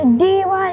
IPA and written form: diːˈwaɪ (Dee Why)